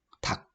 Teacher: 리을 소리가 탈락이 됐습니다.